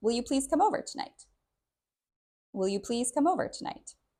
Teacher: This is a question, so the stress is a little bit different. You'll notice we stress the first word, will.